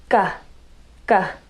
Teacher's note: you'll notice that your tongue is sort of pulled back in the back of your mouth, and your tongue is a bit tight so that it can contract and touch that soft palate. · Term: g sound